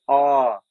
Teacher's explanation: मुख द्वार का पूरा खुलना। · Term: विपरीत